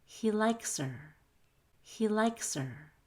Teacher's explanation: i can take out the h and her then the s in likes links to the er